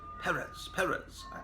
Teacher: you got to put the accent on the second syllable